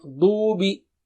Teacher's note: dad is thick and high